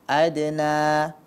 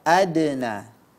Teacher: huruf Dal pada kata Adena ini masuk ke dalam kelompok Qalqalah Sugra jadi dia tidak perlu pantulannya begitu besar cukup dibaca Adena bukan Adena ya ini Qalqalah surah Jangan dibaca